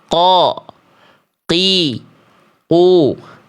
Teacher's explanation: Huruf qof itu makhrajnya dari pangkal lidah. Tempat keluarnya nih makhraj huruf qof keluar dari pangkal lidah.